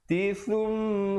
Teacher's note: sa di hujung lidah, ya